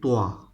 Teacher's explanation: same location but the shift is different of these two letters tua is to be pronounced heavily low pitch